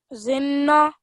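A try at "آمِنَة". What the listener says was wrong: Yes, zinna, but then remember the alif madda. Zinna. And then how would you say this last bit? Yes, ima. Yes, this ta marbuta becomes a ha sakin, so then you're ending with the sound of ha.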